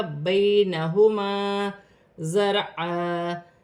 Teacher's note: زا سیٹی والا حرف ہے، جماؤں کے ساتھ ادا کیا جائے گا. را ساکن سے پہلے زبر ہے تو را موٹی پڑھی جائے گی، دو زبر کی تنوین وف کی صورت میں ایک الف مدہ میں بدل جائے گی. · یا ساکن سے پہلے زبر ہے، یالین بنے گی، اسے کھینچا نہیں جائے گا